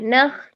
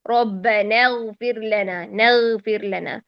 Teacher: یعنی خا میں ہمس ہے, غین میں جہر ہے. اگر غین میں جہر کا لحاظ نہ رکھا جائے تو خا بن جاتا ہے.